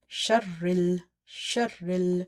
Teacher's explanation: Sheen is connected with the ra, and ra again is connected with this lam.